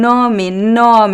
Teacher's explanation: It's closed and a little bit nasal.